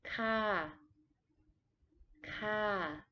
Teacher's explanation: For a female, you say ka, ka, with a falling tone.